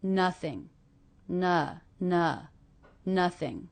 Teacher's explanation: ing endings even though this isn't an ING verb will be unstressed